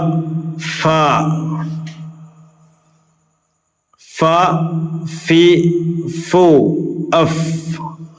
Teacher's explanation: ഒന്ന് മേലെ മുൻപല്ലിന്റെ തലയും താഴെ ചുണ്ടിന്റെ പള്ളയും എന്ന് പറയുമ്പോൾ അക്ഷരം ഫ മേലെ മുൻപല്ലിന്റെ തല താഴെ ചുണ്ടിന്റെ പള്ള